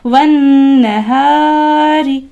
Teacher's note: نون مشدد ہے، لہٰذا آپ یہاں پر 2 سیکنڈ کے لیے غنہ کریں گے ایک الف کے مقدار میں